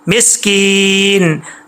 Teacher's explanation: میم کے بعد سین ہے، سین میں سیٹی ہے، بریک پڑا جائے گا